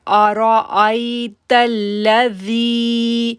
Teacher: اب زال کو ہم نے نرمی سے پڑھا اور 2 سیکنڈ کے لیے کھینچا کیونکہ یا ساکن سے پہلے زیر ہے